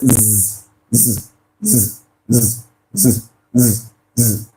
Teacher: As you place your finger on your vocal cord, you will notice a vibration. So this is voiced.